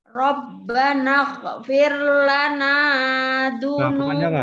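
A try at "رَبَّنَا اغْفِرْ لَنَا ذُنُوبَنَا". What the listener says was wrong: Nah, kepanjangan, Bu. Lana kepanjangan. Ini hanya dua harokat. Rabbana ighfir lana dzunubana.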